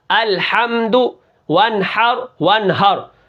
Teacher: ہم نے کیا کرنا ہے، ہا اور ہا کے اندر فرق کر کے پڑھنا ہے کہ ہا کو صاف کر کے پڑھنا ہے اور ہا یہ کیا ہے، گلے سے نکلتا ہے، اور یہ جو ہا ہے یہ گلے کے درمیان سے نکلتا ہے